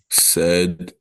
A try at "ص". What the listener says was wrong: No, it's not sad, right? So slod, as you said first, the name is slod, and the sound will be. We said that is a rounded sound, right? Not a flat sound, a rounded. So you're going to curve the sides of your tongue, so it becomes.